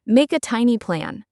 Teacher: we do not separate every word. We link them. Listen to the K sound in make and how it moves into the A.